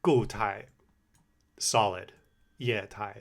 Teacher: These are 4-4-4-4. Fourth tone, fourth tone, fourth tone, fourth tone. · Fourth tone, fourth tone, fourth tone, fourth tone. And when you have two fourth tones, like, I do think you don't need to articulate the second one as much as the first one